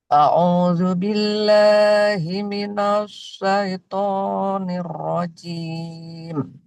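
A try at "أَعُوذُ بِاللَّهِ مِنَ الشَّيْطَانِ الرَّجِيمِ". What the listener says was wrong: Oke, kita perbaiki dulu huruf shinnya. Sya, shin itu adalah huruf yang ketika diucapkan anginnya tersebar. Jadi tidak boleh berkumpul jadi satu.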